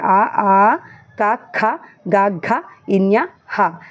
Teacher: కంఠం నుండి పుట్టే అక్షరాలని మనం కంఠ్యాలు అంటాం